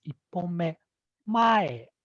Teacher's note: Mae starts from high and then it drops.